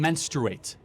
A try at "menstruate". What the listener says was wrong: Okay, because you're saying mensurate, and it's like kind of a little.